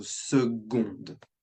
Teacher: We would pronounce the D when second is feminine, so seconde.